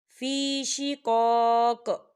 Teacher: فی شقاق یہاں پہ تھوڑا سا کلکلا بھی ہوگا، ساکن قوف جو ہے جب ساکن ہوتا ہے تو اس پہ کلکلا ہوتا ہے